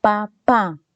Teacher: cuando se juntan ambos labios tanto el superior como el inferior como resultado voy a tener el fono pe b&m alguna prueba